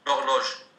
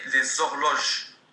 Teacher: Le H, la muet, disparaît. Et on passe au O des horloges. On fait donc la liaison. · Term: H muet